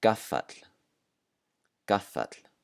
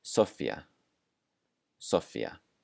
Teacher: Certain Icelandic consonants can be doubled, and that means that we hold the consonant sound for longer.